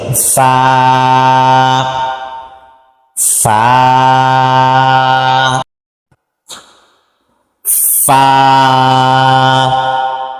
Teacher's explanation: নিচের ঠোঁটের ফ্যাট সামনের উপরের দুই দাঁতের সঙ্গে লাগবে